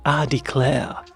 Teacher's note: there's a certain southeastern American accent in like Mississippi, Louisiana, South Carolina sometimes where they also have a softened R